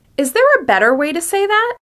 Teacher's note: In order to show curiosity, be sure to use rising intonation.